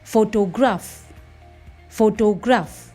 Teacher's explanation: The first syllable is stressed, ho. The second syllable is de-stressed. It becomes deaf. And the third syllable is a secondary stress. At somewhere in the middle, graph.